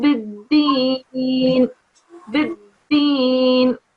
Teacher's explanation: you have to have an emphasis on the dal sound here because it's carrying a shadda.